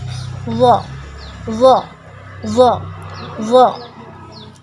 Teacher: Rasakan bahwasanya ujung lidahnya itu nempel ke ujung dua gigi seri atas. Zo. Nah, huruf zo ketika sukun dia muncung.